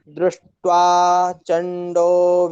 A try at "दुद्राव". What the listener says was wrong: द्रुद्राव नहीं है, द्रुद्राव नहीं है, दुद्राव। दू में भी रकार लगा है क्या? तब आप द्रु क्यों पढ़ रहे हैं? दुद्राव होगा ना। हाँ, द्रुद्राव नहीं है, दुद्राव उसको पढ़िए।